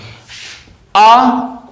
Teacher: आ स्वर हमारा जो है वो जीभ के मध्य भाग से उच्चारित होता है